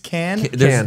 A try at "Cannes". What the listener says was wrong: You don't pronounce the S. There is an S.